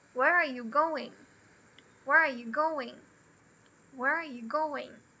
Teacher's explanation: Quando é uma pergunta com uma question word, ela vai ser o up and down no final.